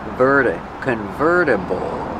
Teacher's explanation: Use a fast D. The T changes to a fast D.